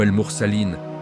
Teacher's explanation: Mad lazim, dans les mots comme al-mursalin, 6 temps obligatoires